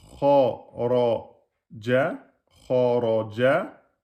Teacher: le ra, il est emphatique parce qu'il porte la fatha